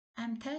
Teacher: Əmtəə sözündə ənin birisi düşür, digəri uzun tələffüz olunur